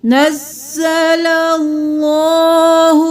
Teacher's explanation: تھوڑا سا بھاری آواز میں سینے کی طرف سے ادا کریں · اللہ کا لفظ موٹا کیونکہ اس سے پہلے والے حرف پر زبر ہے